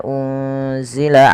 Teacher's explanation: menyamarkan nunnya kepada huruf zai yaitu bacaan ikhfa hakiki